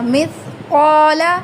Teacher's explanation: لام کو لمبا نہیں کرنا